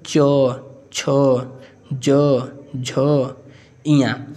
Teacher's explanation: ऐसा व्यंजन या फिर ऐसा वर्ण जिसको बोलने में ठीक है हमारी जीव जो है तालू के मध्य भाग से टच करती है या फिर छूती है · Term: तालव्य व्यंजन, तालव्य